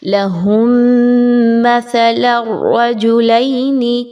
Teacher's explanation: میم ساکن کے بعد میم کا حرف آ رہا ہے اور یہاں پر آپ نے ادغام مع الغنہ کرنا ہے